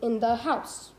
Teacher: a three syllable foot two unstressed syllables followed by one stressed